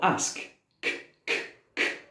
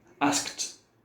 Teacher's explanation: Is there any vibration there? No. So, we have the T sound.